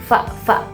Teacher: untuk huruf fa itu udara itu menyentuh bibir bawah ke gigi atas